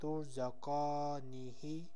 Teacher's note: Next word is tuzakanihi. Here again I have stretched kaf fatha because alif is sakin, so it is alif madda.